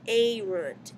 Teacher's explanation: it's erunt because the E on the ending is long by nature.